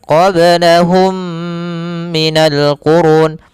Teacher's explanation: mimnya masukkan kepada mim kedua dan ditahan gunahnya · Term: Idgham Mimi